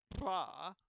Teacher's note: But there are other trills like pra, the bilabial trill, which is a very rare sound